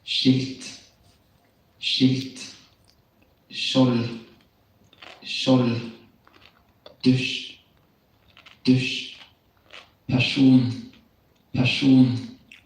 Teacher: When S is written in combination with a K, with a KJ or a J, it will sound like a sh sound. This sound also occurs when the S follows an R.